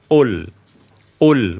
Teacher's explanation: Tidak dengan menghembuskan angin, ya. Tidak dengan menghembuskan angin. Jadi murni qul.